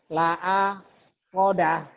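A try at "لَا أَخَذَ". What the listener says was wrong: Nggak ada yang panjang. Bapak mikir dulu jadi panjang. La akhoda.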